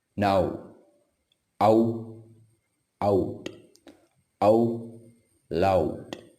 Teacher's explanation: Next sound ow, now, ow out, ow loud. Start as a and moves to u like a put.